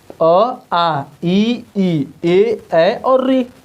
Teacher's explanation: ऐसे स्वर जिनके उच्चारण में हमारा होठ गोला नहीं होता है अवृत्तमुखी कहलाता है। अ, आ ये होते हैं, ये अवृत्तमुखी हैं क्योंकि इनके उच्चारण में हमारा होठ गोला नहीं हो रहा है।